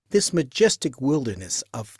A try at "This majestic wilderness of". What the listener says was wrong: I think he said wilderness. I think he missed the R in wilder. There's an there, right? ER. Did he miss it? it's a little weak there.